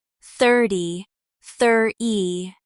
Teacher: 30 often becomes thir-e, dropping the T sound